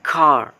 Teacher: The sounds is kinda long, like a British accent car